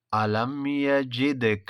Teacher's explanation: یجدک دال میں قلقلہ